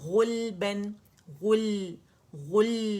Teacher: غ موٹا کرنا ہے غلبن غل غل لام کا توسط شو کریں گے